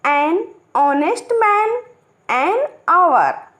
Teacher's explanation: honest and hour begin with an o vowel sound because the beginning h is silent